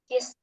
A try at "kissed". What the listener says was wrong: Jangan lupa bunyi teh belakangnya. Kissed.